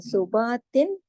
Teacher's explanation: اور پھر یہ بھی حمزہ کی طرح خیر پڑھا جائے گا، لیکن اس حرف ہلکی کی وجہ سے یہاں پر ہم اظہار جو کر رہے ہیں تو تا دو زیر تن کی جو تنوین ہے یہاں پہ ہم پورا اظہار کر کے پڑھ رہے ہیں.